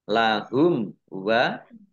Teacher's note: mim sukun bertemu dengan huruf wawu, bacaan idhar safawi, dibaca jelas